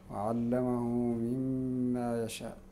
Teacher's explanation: فيها هذا المد متصل قبل الهمزه ويسمى بالمد الواجب ويمد لجميع القراء [موسيقى] بالنسبه لقانون يوسطه تفضل تفضل اسمعك عليهم